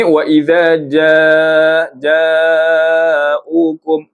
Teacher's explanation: Mad wajib muttasil 4 atau 5 harakat.